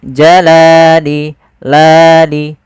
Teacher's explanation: Panjangnya adalah dua harakat. Yaitu kita memanjangkan lamnya. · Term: mad thabi'i